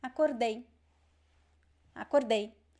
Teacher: Acordei, the stress is at the end.